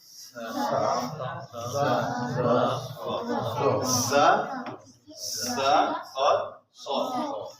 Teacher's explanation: زبان کی نوک نیچے والے سامنے کے 2 دانتوں کے سرے سے لگے تو یہ حرف ادا ہوتے